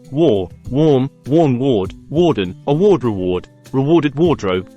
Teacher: The fourth sound of A is in a minor special sound when the A is squeezed between W and R, as in warm. As in war, an A squeezed between a W and an R produces a unique special sound that is often confused with an O sound